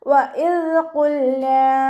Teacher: ദാല് ലൈറ്റാക്കിയിട്ട് ഉച്ചരിക്കാൻ ശ്രദ്ധിക്കുക. നമ്മുടെ നാവിൻ്റെ അറ്റവും മേലെ മുൻപല്ലിൻ്റെ അറ്റവും ചേർന്നിട്ടാണ് ദാല് പുറപ്പെടുന്നത്. സൗണ്ട് ദാലായി പോവാതെ ശ്രദ്ധിക്കുക.